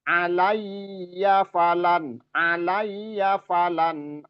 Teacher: Alayya alayya itu harus ditekan dianya juga ada tasdid ya.